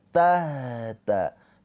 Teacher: Di sini ada ha. Ha sukun ini dia mempunyai sifat rakhah. Rakhaah itu mengalir suaranya